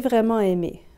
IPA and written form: vʁɛ-mɑ̃-e-me (vraiment aimé)